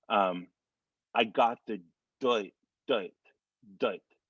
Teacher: And we're going to play with the IR sound. Now, when you have that IR, you're really dropping that R in there again. So it's going to be, I got the doit, doit, doit.